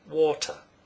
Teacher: The vowel sound before the t is stressed, or, but the vowel sound following it is not, water. This means that in Cockney you can replace the t sound with a glottal stop.